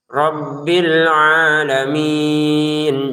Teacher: Untuk ain panjangkan dua harakat saja.